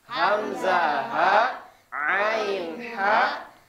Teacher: Hamzah ha tenggorokan bagian bawah Ain ha tenggorokan bagian tengah